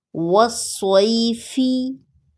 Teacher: را کو ساکن سٹاپ سائن کی وجہ سے، بالصبر، والصیفی۔ یہاں پر یا لین ہے تو اس کو نرمی سے پڑھا جائے گا لیکن کھینچا نہیں جائے گا